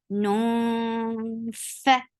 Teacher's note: So you're not pronouncing noon with your tongue. You're just keeping the sound in your nose and preparing your mouth to say fa. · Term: ikhfa